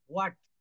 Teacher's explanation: যেমন আমরা হোয়াট বলি, হোয়াট is your name, no, এটা উচ্চারণ হবে হোয়াট, হোয়াট। শেষে কিন্তু ট না ঠ, ঠ আসবে